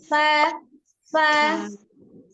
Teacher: Fa itu keluarnya dari ya dari kedua bibir lebih tepatnya lagi keluar dari bibir bawah bagian dalam bibir bawah bagian dalam yang bertemu dengan ujung gigi seri bagian atas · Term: huruf Fa